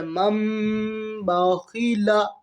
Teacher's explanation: نون لکھنے میں آئے گا اور اس کے اوپر حرکت بھی آئے گی، لیکن ہم یہاں میم کو پڑھیں گے اگر نون ساکن اور تنوین کے بعد با آئے گا تو یہاں میم کو پڑھیں گے اور اس میں گنہ ہوگا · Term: اقلاب